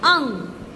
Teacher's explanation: जब हम अंग बोलते हैं तो हमारे नाक और मुंह दोनों से ही हवा निकलती है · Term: अनुस्वार